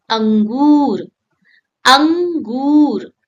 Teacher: A small dot above a letter is called anuswar and it gives a gentle nasal sound like humming through your nose.